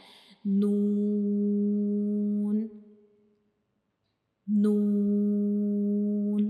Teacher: اور نون کا مخرج کیا ہوتا ہے کہ جب ہم نون کو پڑھتے ہیں تو ہماری زبان کی جو نوک ہوتی ہے، اوپر والے سامنے والے جو 2 دانت ہوتے ہیں ان کے اندر والی سائڈ پہ جو مسوڑے ہوتے ہیں ان کو ٹچ کرتی ہے ہماری زبان کی نوک، تو ہم نون ادا کرتے ہیں.